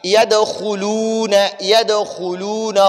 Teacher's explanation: خا کو بھی پر پڑھیں گے، موٹا خا پڑھیں گے